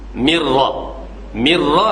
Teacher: Tidak dibaca min rabbihim, mirra seolah-olah nun tu tak ada, ra tu bersyaddah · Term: idgham